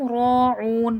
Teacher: را کو موٹا کر کے پڑھا جائے گا، اور او میں واو مدہ ہے، واو ساکن سے پہلے پیش ہے، کھینچ کے پڑھا جائے گا